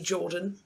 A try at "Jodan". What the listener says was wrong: Jodan! It's Jodan, damn it. There isn't an R.